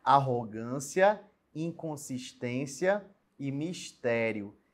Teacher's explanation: Essas três palavrinhas são proparoxítonas, ou seja, a sílaba tônica é a antepenúltima.